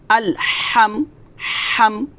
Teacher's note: হা খলকের মাঝখান থেকে চাপ দিয়ে বলতে হবে